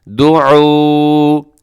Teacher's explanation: دعو یہاں پہ ایک تو عین کا خیال رکھیے گا اور آخر میں واو مدہ ہے، وقف کرتے ہوئے بھی آپ اس کو ایسا ہی پڑھیں گے جیسے ملا کے پڑھتے ہیں